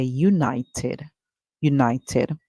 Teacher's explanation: the ed sound in this word is id